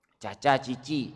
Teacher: C Itu Tengah lidahnya menyentuh langit-langit